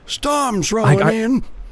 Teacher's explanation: He's got a bit of a whine to his voice, right? He's quite breathy. He's a bit gravelly.